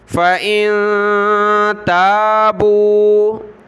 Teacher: فَإِن تَابُوا، فا زبر فا، حمزہ نون زیر ان، نون ساکن کلرفل ہے، ناک میں آواز پیدا کریں گے